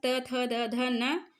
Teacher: जो त वर्ग है उसमें हम दंत को स्पर्श करते हैं, तो ये हैं हमारे दंत वाले त वर्ग त थ द ध न।